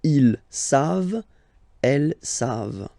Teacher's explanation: E-N-T, you don't pronounce it, so you get the sound savent, v-v-v-v, savent, okay?